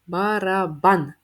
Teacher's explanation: наголос барабан на останній склад на а